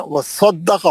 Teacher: स्वाद मोटा पढ़ेंगे सीटी से।